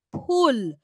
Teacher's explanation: ঠোঁটটা জুড়ে গিয়ে খুলে যাচ্ছে